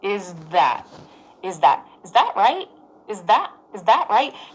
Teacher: you do the Z sound, is, and then you quickly get into position for the TH